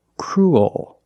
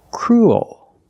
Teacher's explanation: not straight it goes a little high in the back and the bottom of the tongue expands it gets bigger to make the dark l